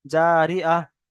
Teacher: জারি আহ। তাহলে গোলতাটা বাদ গিয়ে হা হয়ে যাবে, হা এর উপর সাকিন হবে, গোলতা বাদ যাবে, তানবিন যাবার যে দুপেশ যা থাকবে সব বাদ চলে যাবে, শুধু হা হয়ে যাবে, হা এর উপর সাকিন হবে, হা এর উপর সাকিন হবে। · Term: হা সাকিন